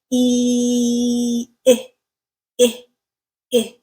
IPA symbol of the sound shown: ɪ